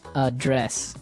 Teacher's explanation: but you pronounce it differently. So the verb address has the stress on the second syllable.